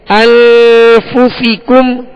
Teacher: انفسکم، انفسکم، الف سے نہیں پڑھیں گے بلکہ انفسی، سین کے نیچے زیر ہے اور زیر کو معروف طریقے سے بغیر کھینچے بغیر جھٹکا دیے ادا کریں گے